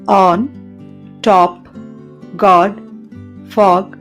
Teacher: ఆ అనే ధ్వని వోకల్ ట్రాక్ట్ యొక్క వెనుక భాగంలో వ్యక్తీకరించబడుతుంది పెదాలు గుండ్రని స్థితిలో ఉండి నాలుక వెనుకకు లాగుతుంది ఎగ్జాంపుల్స్ చూద్దాం ఆన్ టాప్ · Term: షార్ట్ వోవెల్స్